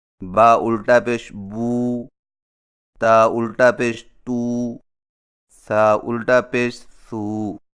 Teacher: الٹی پیش حرف کے اوپر قومے کی شکل کی مڑی ہوئی لکیر کو الٹی پیش کہتے ہیں، اور الٹی پیش ہونٹوں کو گول کر کے تھوڑا سا کھینچ کر پڑھا جاتا ہے، اور اس کی آواز کا رخ سامنے کی طرف ہوتا ہے، جیسے با الٹا پیش بو، تا الٹا پیش تو، سا الٹا پیش سو۔